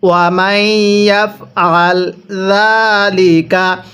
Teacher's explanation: জালের মধ্যে আমরা এক আলিফ টেনে পড়ব, কারণ হরফের উপর এরকম খাড়া চিহ্ন থাকলে হরফগুলো এক আলিফ টেনে পড়তে হয়।